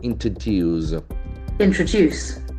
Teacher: The T sound is very prominent. Introduce. Introduce. Accent falls on the third syllable.